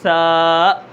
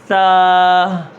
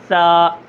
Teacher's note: اس کو 1 الف کے برابر کھینچنا ہے، آخر میں حمزہ نہیں لانا، جیسے سا۔ ہا بھی نہیں لانی، کیسے سا۔